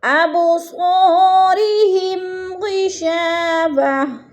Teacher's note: ہم پہ غنہ نہیں کرنا ہم نے کیونکہ ادھر اظہار ہو رہا ہے، لفظ کو ظاہر کر کے پڑھنا ہے.